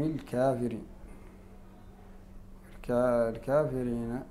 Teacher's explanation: الكافرين هذه ايضا يميلها ورشا بدون خلاف